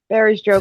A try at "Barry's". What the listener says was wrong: Aries joke. You say Barry like berries. It sounded like fairy. You said Barry's joke.